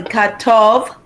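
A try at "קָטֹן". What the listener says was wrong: Careful, what is this last letter?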